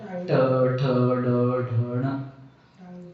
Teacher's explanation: ट ठ ड ढण म्हणत असताना तुमचा जीभ वाकडा होऊन वर मारतो. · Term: मूर्धा